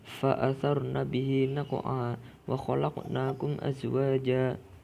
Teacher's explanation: Hukum qalqalah di tengah kalimat atau di tengah bacaan dibaca sugro karena suara tidak terputus dan lidah mempersiapkan ke huruf berikutnya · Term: qalqalah sugro